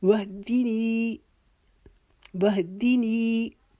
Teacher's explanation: یہاں پہ یہ دو آنکھوں والی جو ہا ہے اس کی آواز حلق کے نیچے سے نکالیں گے جیسے انسان تکلیف کے وقت آواز نکالتا ہے۔